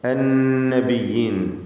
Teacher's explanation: ഷദ്ദുള്ള നൂനിനെ മണിക്കുക 2 ഹറക്കത്തിൻ്റെ അളവിൽ.